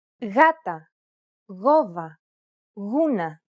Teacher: When it precedes an A, O, or U, however, it's pronounced like a loosely held G sound.